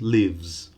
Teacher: Lives, live without the final S ends in a voiced sound. Live. So the final S, lives, also voiced.